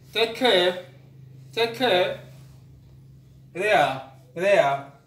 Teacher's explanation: you can see we glide from the first vowel to the next one. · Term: diphthong